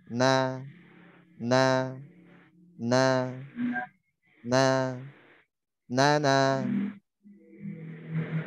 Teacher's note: huruf nun ya ketika fathah caranya tipis tarik buka.